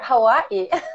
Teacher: There is a glottal stop there, Hawaii.